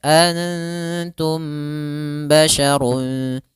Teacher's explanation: Yaitu cara membacanya, mimnya ditahan dulu. Antum sepanjang 2 harokat. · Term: ikhfa syafawi